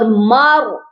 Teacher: یہاں پر را ساکن کو موٹا کر کے پڑھا جائے گا کیونکہ اس سے پچھلے والے حرف پر زبر ہے